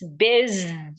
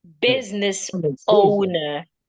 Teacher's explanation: The s there sounds like a zed.